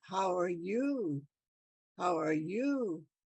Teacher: your voice goes up in the end